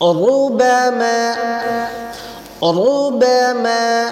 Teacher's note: রয়ে এখানে পেশ আছে, এই জন্য র অক্ষরটিকে আমরা মোটা বা পুর করে পড়ব।